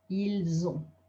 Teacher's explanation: a liaison from an S to a vowel is a Z sound, Z. So you'll end up with the first one, they have, ils ont.